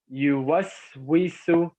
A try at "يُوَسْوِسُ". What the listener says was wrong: Are you seeing the second one? Are you seeing tha or seen? Seen. No, seen. like Sam. You know how you say Sam?